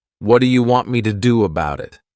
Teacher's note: in Connected speech we can take words like what do you and combine the sounds together to produce one new word